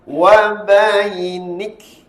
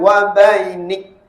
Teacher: Perbezaan huruf qaf dengan huruf kaf ketika waqaf adalah kalau huruf qaf ketika waqaf bunyi detakan yaqa. Tetapi kalau huruf kaf ketika waqaf hendaklah melepaskan angin.